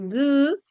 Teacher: ese sonido de la oclusiva velar Sonora